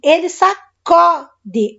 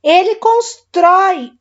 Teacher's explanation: troquei o U pelo O, esse O está aberto. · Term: O aberto